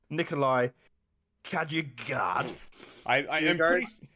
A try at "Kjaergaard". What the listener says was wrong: I'm pretty sure you don't pronounce the J there. I'm pretty sure it's Kjaergaard.